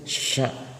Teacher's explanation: Kalau sya itu tengah lidah renggang dengan langit bibir terbuka.